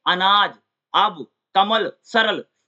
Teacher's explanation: जो छोटा आ होता है, यह अर्धवृत्ताकार मध्य स्वर है। इसके उच्चारण में जीभ का मध्य भाग कुछ ऊपर उठता है और होंठ बीच से खुलता है।